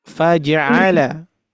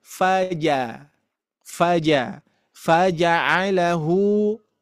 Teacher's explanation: kesalahannya adalah menyerupai qalqalah atau memantulkan huruf jim